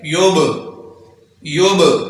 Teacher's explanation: बा साकिन है तो इस पर जुम्बश पैदा करेंगे